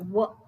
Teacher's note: ಓಷ್ಠ್ಯ ಎರಡು ಸೇರಿ ಉಪಯೋಗಿಸುವಂತಹ ವರ್ಣಗಳು ವರ್ಣ ಅನ್ನುವಂತದ್ದು ಒಂದೇ ಇದೆ ವ ಇಲ್ಲಿ ವ ಅನ್ನ ಉಚ್ಚಾರ ಮಾಡಬೇಕು ಅಂದ್ರೆ ನಮಗೆ ದಂತವು ಬೇಕು ಹಾಗೆ ಓಷ್ಠವನ್ನು ಉಪಯೋಗಿಸ್ತೇವೆ